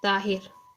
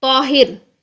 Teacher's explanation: लेकिन अरेबिक में हम क्या बोलेंगे इसको, तौहिर, तो ता नहीं, तो पूरा मुंह भर के